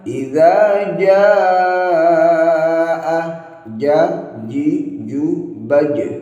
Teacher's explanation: Tanpa disertai hamas, sifatnya ialah jahar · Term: jimnya